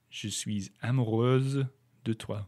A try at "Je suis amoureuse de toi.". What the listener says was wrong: You missed the liaison at the beginning. Before the A. Je suis A. You said je suis A.